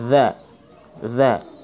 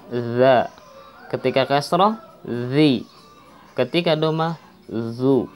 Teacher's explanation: Zal makhrajnya ujung lidah berada di depan atau belakang gigi seri depan 2. Za. Jangan berubah meskipun berbeda harkat.